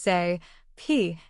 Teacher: place your hand on your throat as you say p and notice there is no vibration this happens because p is an unvoiced sound pear